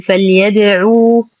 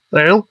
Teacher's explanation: نتم ضمة العين دون تمطيط